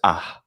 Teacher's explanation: Classical Hebrew says ah with an H sound, and Arabic can do that as well. But it doesn't mean it's pronounced.